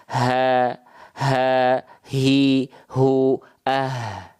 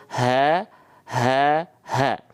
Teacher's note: dilafalkan terlalu ke bawah yang muncul adalah huruf yang lain tuh H besar dilafalkan dari pangkal tenggorokan ya H besar pun punya nafas